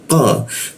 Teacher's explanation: Sikut tenggorokan lidahnya kita naikkan ya. Qo tidak ada hembusan udara ketika membaca qo